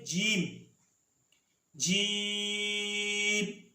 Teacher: جیم ادا ہوتا ہے وسط زبان اور اس کے مقابل اوپر کا تالو